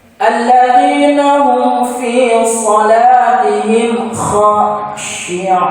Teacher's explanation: Ucapan huruf kha anak sekalian itu di tenggorokan, tenggorokan pangkal yang di atas, sehingga keluarnya agak ngorok.